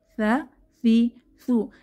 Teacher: জিহবার আগা দাঁতের আগা নরম আওয়াজ, সা জবরে সা, সা জেরে সি, সা পেশ সু, সা সি সু। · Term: পাতলা হরফ